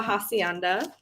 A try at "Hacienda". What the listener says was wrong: it's like my name. The H in Spanish is silent, so it's the Hacienda.